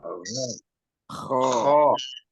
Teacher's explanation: tenggorokan itu ya. Di langit-langit yang lembut di belakang itu ada gesekan.